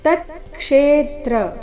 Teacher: ಕ್ಷೇ ದೀರ್ಘ ಬಂದು ಆಘಾತ